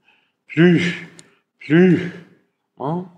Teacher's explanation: wenn die Äußerung mit Vokal aufhört, dann lässt der Sprecher oft die Stimmgebung weg, aber die Luft strömt noch weiter. Dann hört sich das so verhaucht an. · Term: Flüstervokale